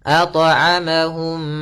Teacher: Cara melafalkannya yaitu suara mimnya masuk kepada mim kedua dan ditahan mimnya. Ditahan m-nya. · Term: idgham mim